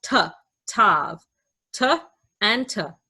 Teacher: Tav makes the T sound. In modern Hebrew, we pronounce both of these letters as T